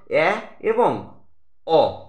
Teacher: এই স্বরধ্বনি দুটি উচ্চারণের সময় আমাদের জিভ মুখের সবচেয়ে নিচে অবস্থান করে এবং একটু উঠে মাঝের অবস্থানে যেতে চায় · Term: নিম্ন মধ্য স্বরধ্বনি